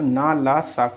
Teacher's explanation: ना ल सा का उच्चारण अब वस्तुत दांतों से ना होकर दांत और मसूड़ों के बीच भाग से होता है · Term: वर्त